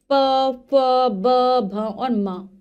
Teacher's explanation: होता है प फ ब भ और म षय व्यंजन है जब हम इनका उच्चारण करते हैं हमारी दोनों होठ आपस में मिल जाते हैं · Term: ओष्ठीय व्यंजन